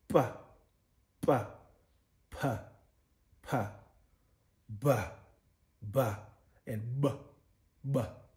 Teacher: both your upper and lower lips are involved in the production of the sound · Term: bilabials